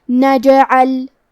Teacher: کلمت نجعل میں جیم پہ جزم ہے تو کیونکہ جیم بھی حروف القلقلہ میں سے ہے تو ہم یہ حرف کو ہلاتے ہوئے یہ کلمہ کو پڑھیں گے